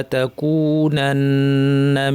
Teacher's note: নুনের উপর তাসদিদ লম্বা গুণা করতে হবে